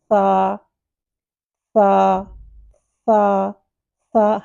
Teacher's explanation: ہلکی سی ایئر آئے گی لیکن سیٹی نہیں آئے گی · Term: ثا